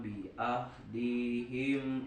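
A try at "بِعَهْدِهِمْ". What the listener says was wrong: Bi ahdihim. Ain bukan ahadu.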